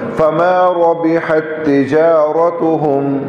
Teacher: اور فما را پر زبر آگے ہے تو را پر زبر آنے کی وجہ سے موٹا ہوگا. اور تجارتهم میں بھی را پر زبر ہے تو را موٹا ہوگا